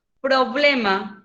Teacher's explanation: se carga en la voz en la penúltima sílaba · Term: palabra grave